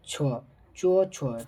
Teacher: च वर्ग में वो सभी का उच्चारण स्थान तालु हो जाएगा